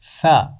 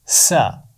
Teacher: ثا کی آواز نرم آواز ہے ثا، اور سین کی آواز میں سی ٹی ہے